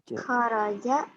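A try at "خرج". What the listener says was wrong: Enggak, jangan nanya dong. Kayak yang jawab. Kharaja. Jangan kayak kharaja keluar gitu. Jadi kayak yang jawab kharaja gitu.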